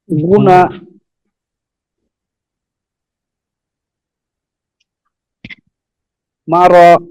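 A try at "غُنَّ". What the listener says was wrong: এটা আবার বলি, এই যে গয়নটা একটু মোটা হবে, গুনা।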